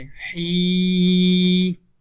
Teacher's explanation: 2 حرکات یا ایک الف کے برابر کھینچ کر لمبا کر کے پڑھیں گے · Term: یا مدہ